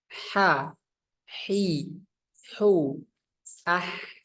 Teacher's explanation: Aliran napasnya itu keluar dengan deras. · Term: hams